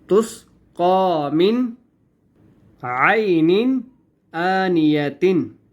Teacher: تسقا من کے آگے عین آ رہا ہے، ٹھیک ہے، عین بھی حروف حلقی میں سے ہے، من کے اوپر ہم نے اخفا یا غنہ نہیں کرنا